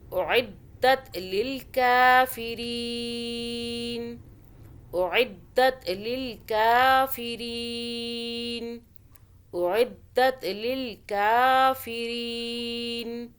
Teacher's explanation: را یا زیر ری ہو رہا ہے، تو ہم ری 2 الف 4 الف 6 الف کے برابر کھینچ لیں گے